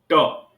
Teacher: ट बोलते समय मूर्धा का स्पर्श किया